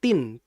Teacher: N itu kan nun. Nun itu kan ghunah. Sehingga harus dialirkan.